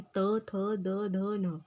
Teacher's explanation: जब आपकी जीभ दांतों को छूती है तो तब ये वाले वर्ड निकलते हैं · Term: तवर्ग